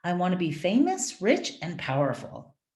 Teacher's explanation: So if I have a list of items, the sentences, the words in the sentence are always going to go up, up, and then when I get to the last thing, down.